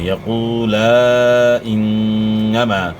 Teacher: الف مدہ کے بعد حمزہ ہے، تو یہاں جو ہے مد کی مقدار زیادہ ہے، 3 سے 4 الف کے مقدار کے برابر یہاں آپ نے مد کرنی ہے. یقول انما، نون مشدد میں آپ نے غنہ کرنا ہے، اور الف مد یہاں الف مد ہے، الف سے پہلے زبر ہے، تو اس کو آپ نے ایک الف کے مقدار کے برابر کھینچنا ہے.